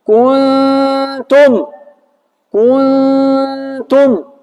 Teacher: në vend të nunit gjithmonë qartë kemi zërin hundor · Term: zëri hundor